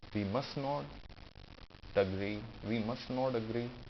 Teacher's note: you can comfortably drop T